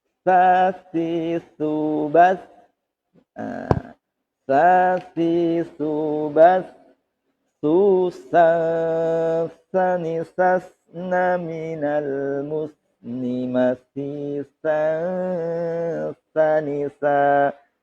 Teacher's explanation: Sa itu hanya angin saja, tidak sampai ada S-nya.